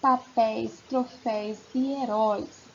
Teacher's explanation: As vogais ficam juntas, elas não se separam. E aberto porque na hora da pronúncia, a nossa boca se abre ao pronunciar os ditongos abertos.